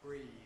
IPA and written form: briːð (breathe)